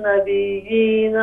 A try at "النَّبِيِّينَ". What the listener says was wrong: نبيين یا کی تشدید صحیح ادا کریں.